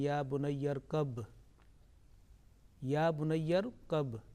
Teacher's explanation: His ba with sukoon and qalqala will take place, that jerking sound.